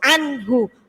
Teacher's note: Jadi harus langsung anhu, ya, tidak boleh mendengung.